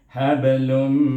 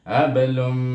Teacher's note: tanwin bertemu dengan huruf mim, maka kita idghamkan dia dengan idgham dengan gunnah dua harakah